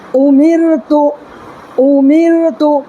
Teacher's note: را ساکن ہے، را ساکن سے پہلے زیر ہے، اس لیے را باریک ہوگی